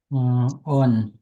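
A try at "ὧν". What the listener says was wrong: Hon. Okay, we pronounce the H sound because we have the writing mark. hon. not on, but hon. hon with the H sound at the beginning of the word.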